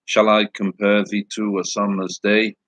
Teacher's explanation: iambic pentameter which is one unit of stressed us Aria yeah unstressed stressed unstressed stressed syllable